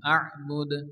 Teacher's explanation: দাল সাকিন এবং কলকলা হবে আ'বুদ